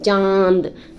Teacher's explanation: तो चांद में आपका जो है नासिका और मुख से दोनों से हवा निकलता है, ठीक है। इसलिए चंद्र बिंदु क्या हो जाएगा, अनुनासिक हो जाएगा।